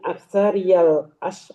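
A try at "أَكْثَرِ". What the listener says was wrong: Nggak pakai ada yaknya. Nggak ada yaknya, Bu.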